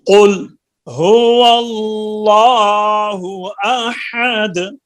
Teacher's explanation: جب ہم نے قل کہنا ہے نا تو لام میں جنبش نہیں ہونی چاہیے